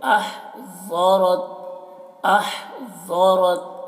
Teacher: ہا کو حلق صدا کریں گے ضاد کو پر پڑھیں گے را کو بھی پر پڑھیں گے